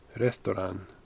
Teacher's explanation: You don't pronounce any T's there.